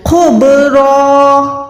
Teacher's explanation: دو زبر جو ہے وقف کے ٹائم ایک زبر ہو کے الف کے ساتھ ادا ہوتی ہے. تو یہاں پر را دو زبر نہیں ہے بلکہ را الف زبر را ہے کیونکہ یہاں پر ہم وقف کر رہے ہیں.